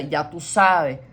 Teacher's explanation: Ya tú sabes turns into ya tú sabe. So you're like letting go of certain endings, and the s's are dropped.